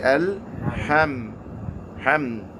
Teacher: this ham, mim, is a letter that you want to abstain from stretching too long because you might accidentally introduce gunna. It's naturally a letter that has nasality in it.